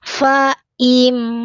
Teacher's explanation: mim sukun bertemu dengan sin, dibaca terang jelas mim sukunnya ya, rapat bibirnya sedikit mengalir.